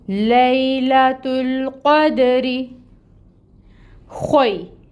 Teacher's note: یہاں پر یا لین ہو رہی ہے، یا ساکن سے پہلے فتحہ کی حرکت ہے لام پر، تو یہاں پر یا لین کا قاعدہ ہو رہا ہے، اس کو ہم نرمی سے پڑھیں گے۔ لام کے اوپر فتحہ ہے 1 کاؤنٹ، تا کے اوپر دمہ ہے 1 کاؤنٹ، اور اس کو ہم ملائیں گے لام کے ساتھ، لام کو ہلائیں گے نہیں، اس میں توسط لائیں گے۔